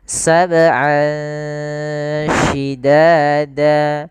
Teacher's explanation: ikhfa yaitu kita samarkan suara an ya ke huruf sy. Jadi terdengar seolah-olah dia ada eng gitu ya. Tapi bukan ang tapi dia ikhfa. · Ini ada bacaan ikhfa. yaitu kita samarkan suara an ya ke huruf sin